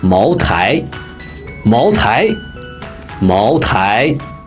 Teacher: Mao, second tone. Tai, second tone.